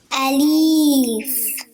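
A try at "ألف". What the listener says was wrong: It's not alif. There's no ya in it. It's alif. First you say the a, then the lam, then the fa. Alif.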